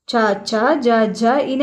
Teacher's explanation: ఎక్కడి నుంచి పుట్టాయి తాలువు నుండి అంటే దవడ నుంచి పుట్టాయి కాబట్టి ఏమవుతాయి ఆ వర్గం మనకు తాలవ్యం అవుతది